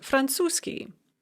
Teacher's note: arabic is pronounced arapskiy or franzuski french is pronounced francoski so it's very common with these ski adjectival endings you're going to de-voice whatever comes before the ski